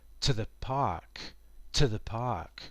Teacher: And to the is not stressed. And again, it's almost pronounced as one word.